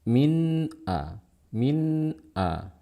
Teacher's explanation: dibaca dengan suara Nun yang jelas karena Nun bersifat pengguna maka kita akan memberikan sifat guna tapi gunanya pendek